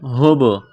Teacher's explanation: با یہاں پر ساکن ہے تو با پر قلقلہ کریں گے